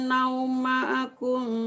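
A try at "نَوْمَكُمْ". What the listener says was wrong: Naumakum, bukan naumaakum. Bukan naumaakum. Naumakum subata, bukan naumaakum.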